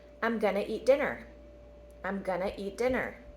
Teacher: so we're dropping the two all together and we're changing the going to to gonna